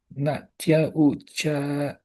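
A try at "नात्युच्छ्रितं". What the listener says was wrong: There's no A. There's no A. Nat uchritam.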